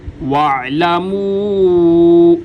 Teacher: واعلموا، واعلموا، عین، واعلموا، واو پہ ہونٹوں کو گول کیا جائے گا جیسے کسی پائی وغیرہ میں پھونک مارنے کی شکل میں ہوتے ہیں۔ واو کے اوپر جو مد ہے 3 الف کی مقدار، اس کو لمبا کیا جائے گا۔ واعلموا، یعنی جتنی دیر کے اندر 3 دفعہ ہم الف الف الف الف پڑھتے ہیں اتنا ہی وقت اس مد کو لمبا کرنے میں لگنا چاہیے۔